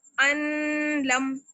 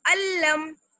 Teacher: نون کی آواز جو ہے وہ بالکل غائب ہو جائے گی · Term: ادغام بلا غنہ